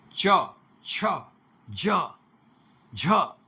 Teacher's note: जब हम च, छ, ज, झ ये बोलते हैं तो स्पर्श के साथ में घर्षण भी होता है, संघर्ष भी होता है, इसलिए ये स्पर्श संघर्षी हो गई।